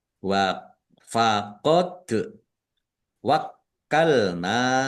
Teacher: dal sukun bacaan qalqalah dibaca memantul ditampakkan pantulannya. · kapnya ada tasdidnya dibaca double ditekan.